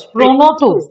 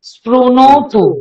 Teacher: রিকারকে আমরা রু বলছি, সেই জন্য স্প্রি এটা না বলে স্প্রু বলছি